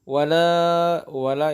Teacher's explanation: wala itu dipanjangkan sebanyak 2 harokat